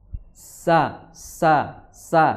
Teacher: sin ujung lidah bertemu dengan gigi seri bawah. Sa seperti itu.